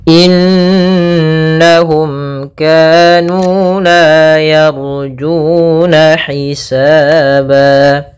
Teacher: mim bertemu dengan Kaf ini kita namakan dengan izhar syafawi yaitu suara mimnya harus dengan jelas tidak boleh ditahan